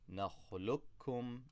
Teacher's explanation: So we drop the qaf and double up on the kaf. نَخْلُقُكُمْ, as if there's two kafs sakin and there's no qaf there. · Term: idgham